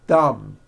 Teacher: and say a th word like this thumb you see that my tongue came out but there was never any air friction